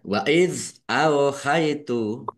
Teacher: zal sukun bukan kolkolah, jangan dipantulkan